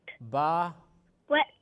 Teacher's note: The wet section of both lips when they meet strongly.